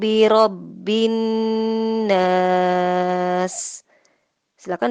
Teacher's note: dibaca Ghunnah artinya didengungkan dan ditahan selama 2-3 harokat jadi bunyinya bukan biro bines Bukan tapi biro bindes Hai bindass